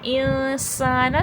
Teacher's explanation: نون کی آواز کو چھپانا، ٹھیک ہے۔ انسان، سین میں صفیر کی آواز آئے گی، اور الف مدہ بھی ہے، تھوڑا کھینچ کے پڑھا جائے گا